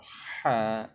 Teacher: হাটা গলার মাঝ বরাবর, বেশি নিচেও নামবে না, বেশি উপরে উঠবে না, বেশি নিচেও নামবে না, বেশি উপরে উঠবে না, ঠিক মাঝ বরাবর।